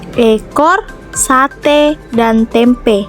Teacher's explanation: huruf E, tengah atas depan tak bundar